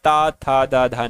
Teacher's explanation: ता ध्वनि की अगर बात करते हैं साथियों ये दंत के अंतर्गत आती है